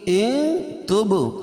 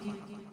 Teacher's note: نون ساکن کے بعد حروف اخفا کے 15 حرفوں میں سے تا ہے تو یہاں ناک میں آواز کو چھپا کر پڑھیں گے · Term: اخفا حقیقی